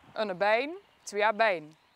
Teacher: Dat woord is qua medeklinkers en klinkers precies hetzelfde, maar omdat ze het met een andere toonhoogteverloop uitspreekt, krijg je een andere betekenis. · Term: lexicale tonen